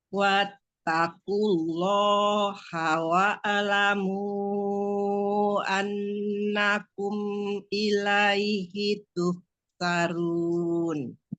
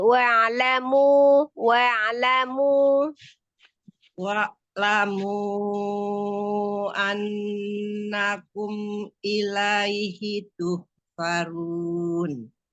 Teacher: Sukun ainnya jangan dihidupkan lagi.